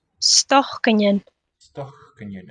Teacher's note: note the pre-aspirated voiceless k in the middle